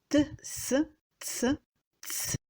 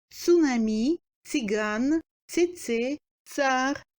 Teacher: C'est une consonne sourde, n'ayant pas de paire sonore.